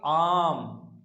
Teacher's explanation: जब आपने बोला आम, तो आपको आ बोलने में ज्यादा समय लगा, तो बड़ा हुआ नहीं हुआ, तो ये क्या हुआ, इससे दीर्घ हुआ, यानी कि 2 मात्रा का समय लग रहा है। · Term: दीर्घ स्वर